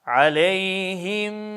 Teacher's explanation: burada Dudaklar Yine idğam olunan harfe göre şekillenir aleyhim sade yani H harfini bitirip de mim harfine başlar başlamaz dudaklarımız tam ileride oluyor aleyhim ve ta ki hemzenin sesi bitene kadar mü sade şeklinde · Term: idğam misley